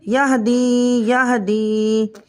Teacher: یا ساکن ہو اور اس سے پہلے زیر ہو تو ایسی یا مدہ بن جاتی ہے۔ اس یا مدہ کو ہم ایک الف کے برابر کھینچ کر پڑھیں گے۔ یا ہا زبر یا، دال یا زیر دی، یا ہدی یا ہدی۔